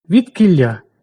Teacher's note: Тому він пом'якшуватися не буде. Відкілля «к» пом'якшений задньоротовий, тому зубний «ди» не пом'якшується.